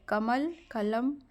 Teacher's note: हिंदी में शब्द के अंत का अ उच्चारण नहीं होता हलंत उच्चारण होता है कमल कलम हिंदी बोलते समय वक्ता या कहने वाला कभी दीर्घ